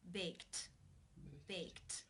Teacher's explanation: the final sound of the verb in the infinitive form to bake is the K sound it's unvoiced therefore the II D is pronounced unvoiced with the T sound